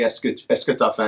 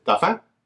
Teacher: If you wanted to just ask something, you would simply ask it in a declarative manner, but with the rising intonation